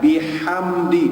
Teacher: Mim mati bertemu selain huruf mim dan ba, hukumnya adalah izhar syafawi, tak boleh dengung.